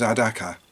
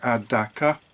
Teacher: It's a Fanti word from Ghana in West Africa. Ah, but Fanti is a tonal language, and you don't say it flat. You've got to say low, high, low.